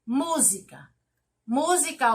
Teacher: grifado mu como sílaba tônica, sílaba mais forte